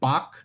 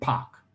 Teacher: So bak is going to have a lower first formant than pak.